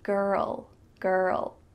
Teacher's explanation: And with the L, my tongue is coming beside my teeth.